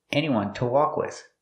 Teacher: To is pronounced t because it's not stressed.